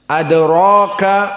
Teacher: Adraka maka ra matobi'i dikarenakan ada alif sakinah setelah ra, alif sakinah qablahu fathah, dan ada ra di sini dalam keadaan huruf mufakhamah, dan dia mendapatkan tafkhim dikarenakan fathah saja. Maka dia asalnya bukan huruf mufakhamah yang mu'abbad.